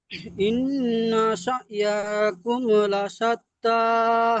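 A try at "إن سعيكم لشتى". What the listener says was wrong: আচ্ছা, এখানে ইয়াটা টান হয়ে যাচ্ছে, ইন্নাসা, ইয়া টান হবে না। ইন্নাসা ইয়াকুম লাশাত্তা।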